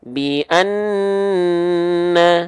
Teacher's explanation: itu ditahan nun tasydid karena dia punya hukum gunnah